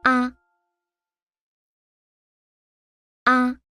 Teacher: The neutral tone is a short and light sound. It is shorter than the other tones. Your voice should be gentle, with no rising or falling.